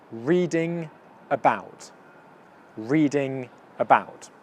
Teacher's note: these two almost blend into one word actually because of the nasal sound coming out of your nose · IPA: /ˈriːdɪ. ŋəˈbaʊt/